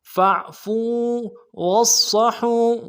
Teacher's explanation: فاعفو واصفحوا، واو کو صاد کے سامنے لانا، صاد کی سیٹی موٹی ہوگی